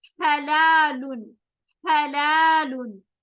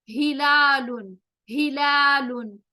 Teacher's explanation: हा हलक के बीच से निकला, हा सीने के ऊपर से निकला।